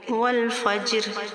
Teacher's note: جیم پر کلکلہ صغرا اور لام کو ہم موٹا نہیں کریں گے۔